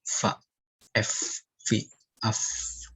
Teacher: Bibir bawah bagian dalam menyentuh gigi seri atas. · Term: huruf fa